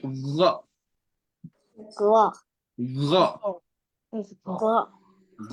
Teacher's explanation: They have the Ghain come out from the top of the throat.